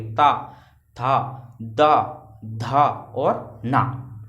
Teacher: ता में आपकी जीभ जो होगी वो देखना पीछे जो दांत हैं हमारे, जहाँ पे जिनकी जड़ है वहाँ पे आके टकरा रही होगी